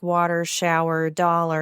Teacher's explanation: Virginia is a very interesting state because historically because you have in Appalachia and much of inland Virginia, you have what's called rhotic speech patterns. You hear the R clearly both at the ends of words like water, shower, dollar, and in the middle of words that have no R like wash.